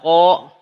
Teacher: dari pangkal lidah bertemu dengan langit-langit Ya tidak keluar nafas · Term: qof